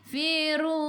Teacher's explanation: matikan dengan huruf nun. Hujung lidah menyentuh gusi atas.